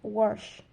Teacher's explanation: the epenthetic R, in which the person places an additional sound that weren't there before